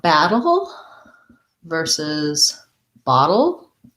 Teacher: both of these have our flap t and our syllabic l